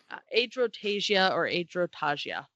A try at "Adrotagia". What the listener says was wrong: Tasia. Yeah, I don't pronounce the G Yeah, it's not a hard G.